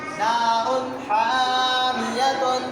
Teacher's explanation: نار حامیۃ، نار، را کے اوپر دو پیش کی تنوین ہے، تنوین کے بعد حروف علقی میں سے کیا ہے؟ ہا آئی، اظہار علقی ہوگا بغیر غنہ کے، صاف پڑھیں گے